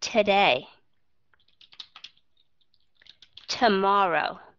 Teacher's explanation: Hay là to day, viết rõ nó ra. Nhưng mà khi mà các bạn cho đi vào chung một chữ đó, các bạn sẽ đọc âm thứ nhất nó là schwa sound.